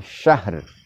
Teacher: Ha salah satu sifatnya adalah hamas, yaitu mengalirnya nafas. Sedangkan ro salah satu sifatnya adalah bergetar. Di sini sekali lagi bahwa dua huruf tersebut kita tampakkan sifatnya dengan jelas.